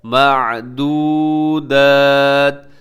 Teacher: واو مدہ ہے، واو سے پہلے پیش ہے تو اس کو اپنے تھوڑا سا لمبا کر کے پڑھنا ہے، معدودات۔ آگے وقف ہے رموز اوقاف میں سے طا کا، تو یہاں وقف کر دیجیے گا۔